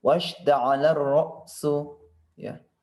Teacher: Kemudian di sini gunnah juga ada mad tabi'i. Kemudian ini termasuk alif lam syamsiyah, langsung dileburkan ke huruf ra.